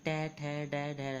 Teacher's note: ये मूर्धा से उच्चारण पर बोलेंगे